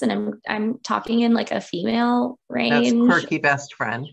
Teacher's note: the focus of the tone was all in my throat you know it was this kind of pressed gravelly throaty sound